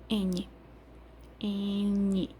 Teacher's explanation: Você não chega a fechar os lábios na letra N, mas você coloca tanto o dente quanto a língua para produzir o som do N, interrompendo.